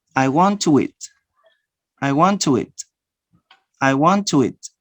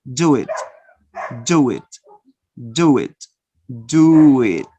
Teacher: It's a soft wah, but you insert this wah to connect again two vowels.